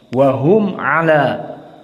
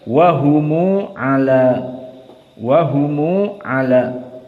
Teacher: Abu Ja'far al-Madani dengan silatul mim, sehingga tidak ada lagi hukum idhar.